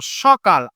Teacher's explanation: দন্ত স-কে আমরা কিন্তু কনভার্ট করে ফেলি তালব্য স এ। যেমন আমরা যখন বলছি সকাল, এই উচ্চারণটা কিন্তু দন্ত স আছে, আমরা কিন্তু উচ্চারণ করব সকাল, অর্থাৎ তালব্য স এর মতন উচ্চারণ হয়।